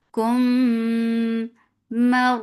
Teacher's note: Keep meme light, but ra is heavy because there is fatha before it. So make sure because of ra, don't make meme heavy.